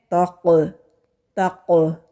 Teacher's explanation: जब कौफ साकिन हो तो वहाँ पर आवाज़ पलट के आती है। तक़ तक़, ये जो पलट की आवाज़ आ रही है इसको कलकला कहते हैं।